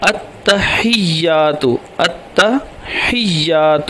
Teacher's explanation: التحیات کو التحیات، التحیات کو التحیات کر دیتے ہیں، تو وہ التحیات نہیں ہے یہ لفظ، التحیات، حیات جو ہا ہے اس کو یہ کے ساتھ ملائیں گے، مدغم کریں گے کیونکہ یا مشدد ہے، اس کے اوپر شد ہے۔